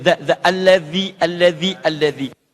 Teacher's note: Nah, kalau mengucapkan dal itu sedikit digigit lidahnya.